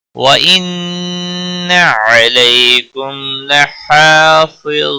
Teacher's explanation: میم ساکن کے بعد لام آیا ہے، اظہار ہوگا، اظہار شفوی کہتے ہیں اسے · علی یا لین ہے، تھوڑا نرمی کے ساتھ کھینچ کر پڑھیں گے